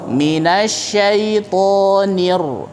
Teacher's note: Ro harus ada getarannya ya. Karena dia punya sifat takrir, yaitu bergetar ya atau mengulang.